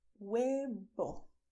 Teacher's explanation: V, which in Spanish will be pronounced as B. So you have to put your both lips together to say huevo.